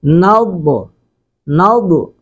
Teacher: ضاد کو پر کر کے پڑھیں گے لیکن اس ضاد کو چھوڑیں گے نہیں، قلقلہ کرتے ہوئے چھوڑیں گے نہیں، نظرتا وسرورا، نظرتا وسرورا، نظر، رو کو پر کریں گے۔